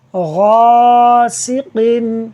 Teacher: عین کے اوپر زبر لگانا تھی جو کہ لگانا میں بھول گیا ہوں۔ غاسقن، غین حروف مستعلیہ میں سے پر پڑھا جاتا ہے، اس کی وجہ سے الف کو بھی پر پڑھا جائے گا